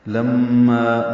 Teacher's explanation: میم مشدد پہ غنہ ہے، ما الف مدہ ہے، دو حرکات لمبا کریں گے